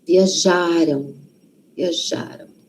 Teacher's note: Passado está antes da gente. O passado, então, a sílaba tônica, a sílaba forte, está antes.